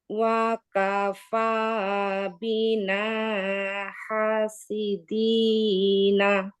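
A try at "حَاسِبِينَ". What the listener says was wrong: হাসিদি বিনা, বি আছে।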